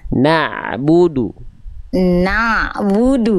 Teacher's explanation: Jadi kalau ain kan sifatnya tawasud, sedikit mengalir. Jadi jangan sampai na'bu terlalu kuat.